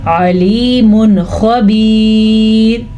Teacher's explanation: जैसा कि यहाँ पे नून साकिन के बाद खा आया हरूफ हल्की में से तो इजहार हो गया, इसी तरह ये तनवीन है और तनवीन के बाद खा आ गया तो फिर इजहार हो गया